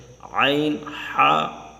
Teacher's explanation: اوپر والا حلق وہاں سے غین، خا ادا ہوتے ہیں، درمیان والے حلق سے عین، حا ادا ہوتے ہیں، اور نیچے والے حلق سے جو سینے کی طرف ہے ہمارا حمزہ، ہا ادا ہوتے ہیں۔